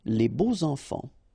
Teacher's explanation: even if you've got this X, well, phonetically it will be like Z, so like if it would be an S, okay? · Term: liaison